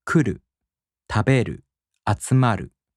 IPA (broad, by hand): kuꜜru tabeꜜru atsumaꜜru